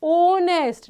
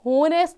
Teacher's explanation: The word honest has a vowel sound O, though its spelling begins with the consonant H. कोई फर्क नहीं पड़ता कि ये ऐसे स्टार्ट हो रहा है.